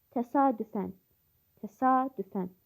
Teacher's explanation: vurğu qalın sait yəni a-nın üzərindədir.